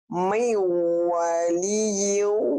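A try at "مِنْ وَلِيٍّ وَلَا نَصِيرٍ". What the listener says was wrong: Kurang nahan ya. Buka, wa-nya jangan ditahan wa-nya. Tapi yang ditahan meu-nya. Meu, jangan wa jangan. Wa-nya enggak ada amannya. Meu waliyu wala nasir.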